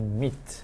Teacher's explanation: certain sounds right that happen more forward in the mouth like the e sound is more forward it's closer to the lips